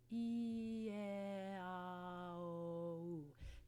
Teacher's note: the E vowel, for example, is our most closed vowel sound, and something like ah or o is an open vowel sound. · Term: pure vowel sounds